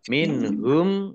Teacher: nun sukun bertemu dengan huruf ha bacaan izhar dibaca jelas